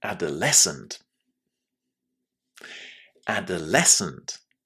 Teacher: The stress there is on the last syllable.